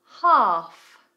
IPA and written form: hɑːf (Half)